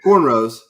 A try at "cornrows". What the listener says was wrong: Like, don't pronounce corn as hard as you is. Just cornrows. Like, you see how cornrows.